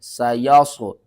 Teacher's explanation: صاد کو آپ نے موٹا کر کے پڑھنا ہے